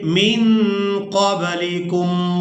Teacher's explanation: نون ساکن پر اخفا کریں گے، یعنی نون کی آواز کو ناک میں چھپا کر ادا کریں گے